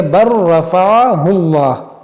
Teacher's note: اس کو پڑھیں گے با لام را زبر بر. اب یہ لام کی آواز یہاں پر نہیں آئے گی، اس کو پڑھیں گے بر رفعہ اللہ. · یہ لام کو بھی نہیں پڑھیں گے کیونکہ پہلا حرف متحرک ہے، دوسرا ساکن، تیسرا مشدد. تو جب اس طرح کا سچویشن آ جائے تو اکثر مرتبہ جو ہے یہ ساکن حرف کو نہیں پڑھا جاتا ہے، اس را کو پڑھائے گا بر.